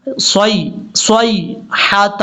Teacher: صاد کو یا سے کنیکٹ کریں گے، یا لین ہے، اس کو لمبا نہیں کرنا. صیحۃ، ہا کو کلیئر کرنا ہے.